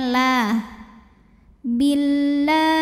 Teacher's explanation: lam jalalah dibaca secara tarqik sebab huruf sebelumnya berbaris kasrah maka lamnya tipis